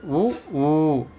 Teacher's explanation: இதல்களை குவிப்பதால் பிறக்கும் எழுத்துக்கள் உ ஊ